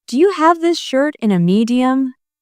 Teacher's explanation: The stress is on have shirt and medium.